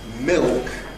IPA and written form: mɪɫk (milk)